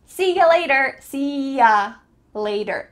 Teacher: That final word is the same, later, but the middle word, you, which is clearly pronounced, changes to ya.